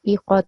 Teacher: you made this qaf long. So it's iqatu because it only has a fatha